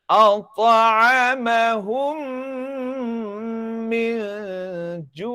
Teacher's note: Ya, dia ada SOP dia, iaitu mim yang bertemu dengan mim ini mesti ditutup rapat bibir selama dua harkat.